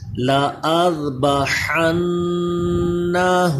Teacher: نون مشدد ہے اس میں غنہ بھی کریں